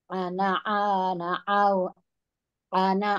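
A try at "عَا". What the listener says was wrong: A-nya panjang Bu yang pertama, yang hijaunya.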